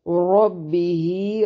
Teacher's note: را کو موٹا ادا کریں گے، با کو باریک